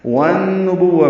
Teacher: والنبوہ میں واو کو نون سے ملائیں گے، ادغام شمسی مع الغنہ، الف لام نہیں پڑھیں گے، غنہ کریں گے نون پہ. با کو واو سے ملائیں گے، واو تا جلدی پڑھیں گے.